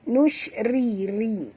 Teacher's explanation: ra sini ra terqi, ra tipis, jangan tebal, ya. Nusyri, jangan sebut ri, ya.